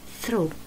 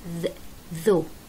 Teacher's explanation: نفس المخرج بالضبط، بس واحدة مهموس ثرو، واحدة مجهور ذ ذو